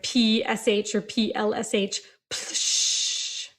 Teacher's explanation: So There's also like a splashing sound. So again, we get kind of an unvoiced plosive